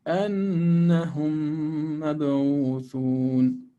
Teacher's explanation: two harakat for noon with shadda, and two harakat for the merging of idgham shafawi. أنهم مبعوثون with qalqala here, Q, qalqala.